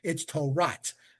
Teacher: They put the taf at the end instead of the hey, the t sound instead of the a